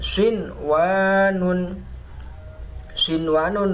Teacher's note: nunnya terbaca dengan jelas, bukan dibaca siwanun, bukan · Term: izhar mutlak